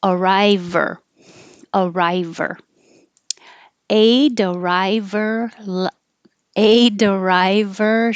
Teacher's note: so you get rid of the H you connect the consonant before it to the ER what's left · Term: H deletion